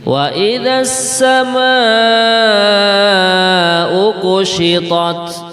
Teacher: mat wajib muttasil ya, yaitu pada kalimat as-sama'u, ma itu ada mat tabi'i, kemudian setelahnya ada hamzah yang berkumpul di dalam satu kalimat. Ini kalau di dalam tajwid biar indah ini membacanya 4 harokat ya.